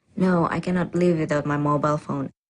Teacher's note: the answer is definite, and this certainty is expressed with a flat or level tone.